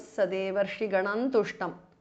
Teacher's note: Anuswara changes to n, the nasal of ta varga.